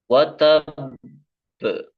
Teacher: karena di sana ada tasdid maka sedikit ditahan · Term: qqalah Kubro